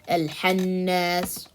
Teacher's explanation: pronouncing the kha as a ha or kaf